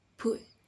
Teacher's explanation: The back of the tongue is high.